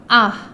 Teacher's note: ہا یعنی کہ چھوٹی ہا، یہ سینے کی طرف حلق کے نیچے کے حصے سے آتا ہے